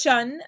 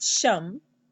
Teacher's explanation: notice that it's Shan and it's not sham and the reason for that is because you have a n following it